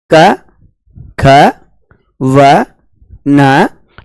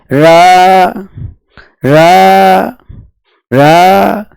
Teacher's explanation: वह व्यंजन जिसके उच्चारण में जिह्वा को 2-3 बार कंपन करना पड़ता है उसे लुंठित व्यंजन कहते हैं। और जब इस र का उच्चारण किया जाता है तो विशेष प्रकार का कंपन होता है, इसी कारण इसे प्रकंपित भी कहते हैं।